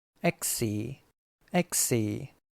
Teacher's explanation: we say x with two syllables and since we can end a syllable with a stop K we don't need to squeeze in another vowel after the k sound